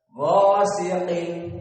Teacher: Maka gha di sini mufakhamah dibaca dengan kental, dan sin muraqqaqah, dan qaf mufakhamah.